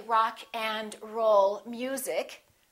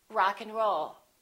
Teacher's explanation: in this case we reduce the a and the d those disappear often